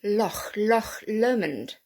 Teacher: it's a very guttural sound a bit like you're clearing your throat